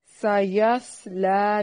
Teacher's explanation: سین کو باریک سیٹی کی آواز کے ساتھ ادا کرنا ہے، صاد کو موٹی سیٹی کے ساتھ ادا کرنا ہے لیکن ہلانا نہیں ہے.